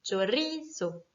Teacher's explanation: Le mot chorizo, qui est un mot qui se finit donc par un O, donc par une voyelle, va s'accentuer naturellement sur ri. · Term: syllabe accentuée